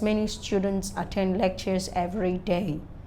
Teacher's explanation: Now, the emphasized word is attend. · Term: emphatic stress